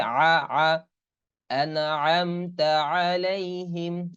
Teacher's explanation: আইনটা গলার ভিতর থেকে, ফলকের অনেক ভিতর থেকে উচ্চারণ করতে হবে